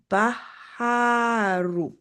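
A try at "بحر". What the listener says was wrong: Beautiful. Baharu. Good job. You applied the shadda and you applied the mud.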